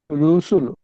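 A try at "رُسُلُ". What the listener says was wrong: রুসুল, আরো জলদি। যেমন রুসুলু।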